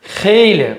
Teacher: Xeyli ilk hecası ikinci hecasına nisbətən qüvvətli deyilir. Xeyli vurğu düşür əvvələ. Yəni ilk hecasına düşür.